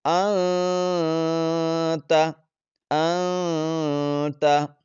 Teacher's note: نون ساکن ہے، نون ساکن کے بعد حروف اخفاء کے جو 15 حروف ہیں ان میں سے تا آ گیا، تو آواز کو ناک میں چھپا کر پڑھیں گے۔